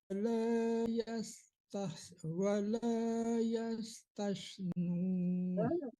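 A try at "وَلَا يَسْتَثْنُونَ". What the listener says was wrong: Bukan tais tapi tas. Sekedar menempelkan ujung gigi ke lidah. Tempelkan aja jangan ditekan.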